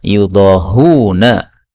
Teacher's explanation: Semua qiraat yang lain membacanya yudahuna tanpa hamzah di tengahnya